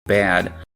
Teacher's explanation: For me, it’s pretty much always diphthongized, and maybe slightly lower than my DRESS vowel. · the primary distinction between these two vowels is length and diphthongization, rather than quality. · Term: TRAP